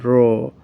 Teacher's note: जिसके उच्चारण में जिह्वा कांप जाए, जिह्वा में कंपकपी उत्पन्न हो, जिह्वा में कंपन उत्पन्न हो, उसे हम लुंठित कहते हैं